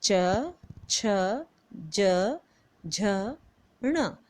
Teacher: तालु उच्चारण मतलब जब हमारी जीवा तालु के ऊपर जाकर के टच होती है, लगती है, तब ये स्वर हमारे मुंह से निकलते हैं, जो कि च, छ, ज, झ, ण। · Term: तालव्य व्यंजन